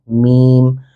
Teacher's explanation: جب ہم میم پڑھتے ہیں تو ہمارے دونوں ہونٹ ملتے ہیں